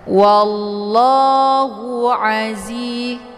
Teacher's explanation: Zi dibaca panjang dua harakat.